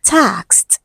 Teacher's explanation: It ends with the k sound. So for words ending with k sound, which is a voiceless sound, the ed becomes t